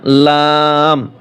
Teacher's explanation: জিহ্বার আগার কিনারা সামনের উপরে দাঁতের মাড়ির সঙ্গে লাগাইয়া